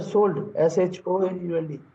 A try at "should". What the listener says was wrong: शोल्ड नहीं, उसको शुड पढ़ते हैं. इसको शुड पढ़ते हैं. शुड, एल साइलेंट होता है. शुड.